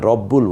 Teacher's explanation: রাব্বুল বলছি না, রব্বুল বলছি। তাই র এর উপর জবর আছে, কিন্তু আমরা রা না বলে র বলছি।